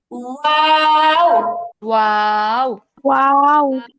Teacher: কথাটা কিরকম, বিশেষ দ্রষ্টব্য, ওয়াও উচ্চারিত হয় দুই ঠোঁট গোল করে মাঝে সামান্য ফাঁক রেখে